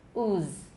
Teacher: There's no voicing in the second half of the z. Ooze. We need that voicing in the first half, so please don't neglect that. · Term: final z